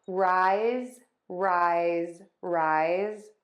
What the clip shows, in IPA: raɪz